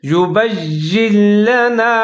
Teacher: لام حروف یرملون کا ہے تو آپ نے ادغام کرنا ہے، اس کو ادغام تام کہا جاتا ہے